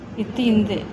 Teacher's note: நாவின் நுனி மேல்வாய் நுனி